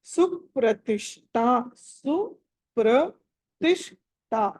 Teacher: తర్వాత సుప్రతిష్ట, సుప్రతిష్ట, ఆ షా అన్నది అక్కడ షట్కోన్మల ష, ఠా ఏమో మహాప్రాణము ఒత్తి పలకాలి.